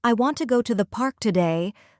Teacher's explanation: the strong words are want, go, park, and today. The small words I, to, the almost disappear.